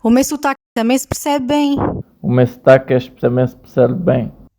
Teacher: os sotaques do sul e das ilhas, que mudam os ditongos das palavras meu e bem, dizendo me e bem.